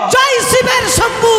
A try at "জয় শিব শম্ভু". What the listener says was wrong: শিব মাঝি ভাই, শিবের শম্ভু নয়, জয় শিব শম্ভু।